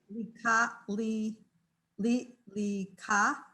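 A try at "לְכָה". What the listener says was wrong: All right, that's a Ch. Lecha.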